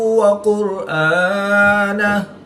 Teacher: را ساکن سے پہلے قاف پر پیش ہے تو را کو پر یعنی موٹا پڑھیں گے